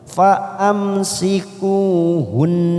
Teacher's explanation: Hunna fa'am mim sukun bertemu sin idhar sahfawi kita baca jelas tanpa mendengung